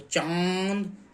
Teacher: इसका उच्चारण मुख और नाक से होता है, लेकिन मुख से अधिक हवा निकलती है इसके उच्चारण में। जैसे चांद हो गया, तो चांद, तो मुख से अधिक हवा, मुख से अधिक हवा निकलती है, और नाक से कम हवा निकलती है इसे। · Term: अनुनासिक